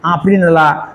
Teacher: See, there is a vibration in our nose. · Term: nasal sound